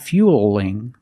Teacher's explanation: now we see the word fueling with the L between vowels so it's a light L